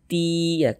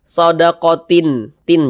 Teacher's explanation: bunyi tanwin ini dimasukkan atau melebur ke huruf ya. Kita baca sodakoti ti ya.